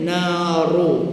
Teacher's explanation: Ru ra tanwin. Ra baris depan ra baris atas dibaca tafkhim.